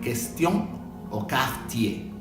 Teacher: La QU es parecida al español, no se va a pronunciar la U.